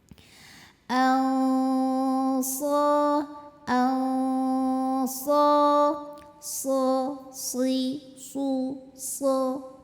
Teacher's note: tebal nebelinnya pangkal lidah naik lidah terasa lebih tegang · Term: Shad